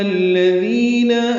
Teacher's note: دی یا مدہ ہے، 2 حرکات لمبا کرنا ہے